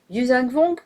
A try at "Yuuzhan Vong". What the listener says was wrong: Pourquoi tu mets l'accent en façon Wong? Tu mélanges V et Wong. Vong. Vong. Comme avec un V.